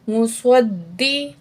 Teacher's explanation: मुस्वद, दाल ज़ेर दी, दाल के ऊपर तशदीद है, थोड़ा सा भारीपन होगा